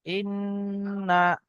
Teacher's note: হামজা, নুন জের ইন, নুন জাবান না, ইন্না, ওয়াজিব গুন্না, নুনের উপর তাসদীদ এসছে